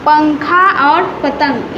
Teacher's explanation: उच्चारण करते समय वायु केवल नाक से निकलती है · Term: अनुस्वार